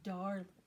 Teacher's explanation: We put the emphasis on the first syllable and the second syllable is very soft.